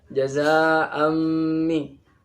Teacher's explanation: Za dibaca panjang, seukuran 2,5 alif atau 2 alif.